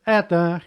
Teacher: First one is under stress, but second is not. That means letter O has sound A.